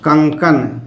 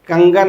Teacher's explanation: क्या किस में बदल जाता है? ग में, यानी क अपने घोष ध्वनि ग में बदल जाता है।